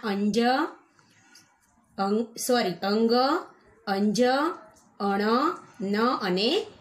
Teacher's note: અનુનાસિક વ્યંજન કે જેનું ઉચ્ચારણ એના પોતાના સ્થાન ઉપરાંત નાકમાંથી બોલાતા હોય